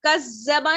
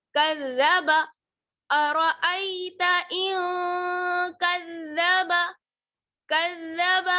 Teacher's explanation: زال کو جمانا نہیں ہے، باریک پڑھنا ہے، نرمی سے پڑھنا ہے. کذبا نہیں، وہ زا ہو جائے گا.